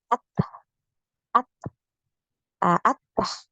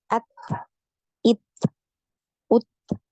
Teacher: bukan ya Sulit ya kalau mau dialirkan suaranya itu sulit ya jadi untuk huruf Ta ini nafasnya ngalir suaranya tertahan ya aliran nafasnya mengalir kemudian aliran suaranya tertahan